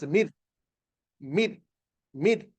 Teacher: But this is without gunna, so we say noon sakin will merge or join ra without gunna. Mim, noon sakin will join ra without gunna. So the noon basically disappears. So it becomes mid, mid, mid.